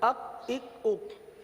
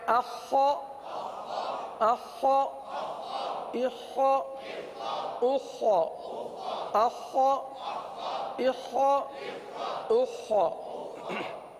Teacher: تو اس کو حلق میں اتارے، یہاں پر یہ حلق کے اوپر والے حصے سے ادا ہوتا ہے، حلق میں اتاریے اور خا کی آواز کو پر ادا کیجئے۔